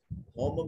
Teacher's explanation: میم ساکن ہے، اس کے بعد نہ با ہے نہ میم ہے، تو اظہار شفوی ہوگا، میم کو ظاہر کر کے پڑھیں گے